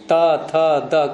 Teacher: दंत का तात्पर्य नीचे वाले दांत नहीं ऊपर के दांत और जो मसूड़े होते हैं उनका जोड़ बीच का स्थान